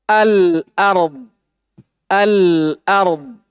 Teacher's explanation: Yang al dibaca jelas ketika bersambung dengannya, dinamakan al-qamari. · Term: alif lam al-qamariyah